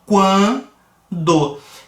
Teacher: Então a gente sobe, observa que o U é pronunciado discretamente, o AN vai ter um pouquinho mais de intensidade, então a gente cresce de uma semivogal para uma vogal